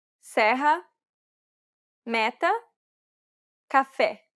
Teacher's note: This vowel sound is identical to the E in set. It's known as the open E sound in Portuguese. É. É.